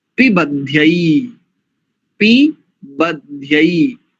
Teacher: दोनों दीर्घ होते हैं, एकार भी और अईकार भी